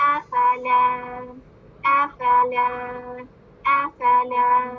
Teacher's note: 2 count, کیونکہ اس کے ساتھ الف مد ہے، الف مد یعنی الف خالی، اس سے پہلے فتحہ، تو لا 2 کاؤنٹ ہے، اور اور فا ون کاؤنٹ، افلا افلا افلا، تینوں کی ڈیوریشن برابر نہیں ہے، افا ون کاؤنٹ، لا 2 کاؤنٹ